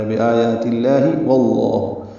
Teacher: واو کی زبر کی وجہ سے یہاں پہ لام اسم جلالہ کو پر پڑھیں گے، دو حرکات لمبا کریں گے۔